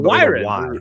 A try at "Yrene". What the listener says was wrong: No. Where are you getting the W sound? Where are you getting the W sound?